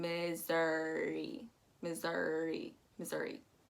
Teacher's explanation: But what you want to make sure is that SS turns into a Z and that OU turns into an Missouri, Missouri. Also, make sure that when you're saying Missouri, that your U is not too pointed. It's gonna roll directly into the R as one swift motion.